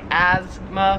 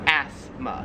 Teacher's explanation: we kind of say it more like a z sound like asthma where here it's more like a like an s sound